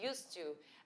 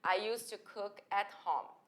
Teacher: você não vai aliás pronunciar esse D